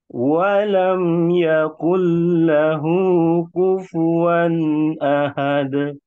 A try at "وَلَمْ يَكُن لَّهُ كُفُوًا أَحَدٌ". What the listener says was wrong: Masya Allah, tabarakallah.